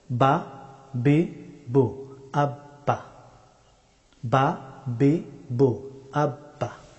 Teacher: বা হরফটি উচ্চারিত হয় দুই ঠোঁট বন্ধ করে, ঠোঁটের বিজা অংশ থেকে বা হরফটি উচ্চারিত হয়।